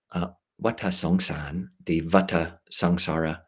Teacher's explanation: In Thailand, there's just no V sound, so it's pronounced as basically a pure W. So Vata Songsan, the Vata Sangsara, is with just a W.